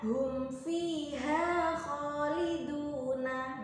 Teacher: Nah, itu dinamakan dengan bacaan idhar syafawi, mim sukun bertemu dengan fa. Maka cara membacanya adalah dibaca jelas dan terang, tidak boleh dibaca dengung